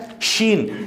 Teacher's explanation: اچھا، اس کے بعد آ جاتا ہے شین۔ شین حروف شجریہ میں سے ہے، زبان کے درمیان اور تالو کے درمیان والے حصے سے ادا ہوتا